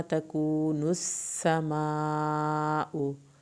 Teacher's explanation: مد واجب کی وجہ سے 3 الف کے برابر اس کو کھینچیں گے، حمزہ کی پیش کو لمبا نہیں کریں گے